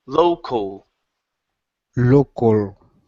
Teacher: So this A is not an ah sound. It's the same as the O.